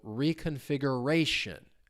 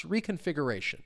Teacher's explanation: Stress comes on the second to last syllable.